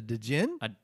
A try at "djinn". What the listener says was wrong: It's just pronounced gin. No, the D is not... You don't pronounce it all the way.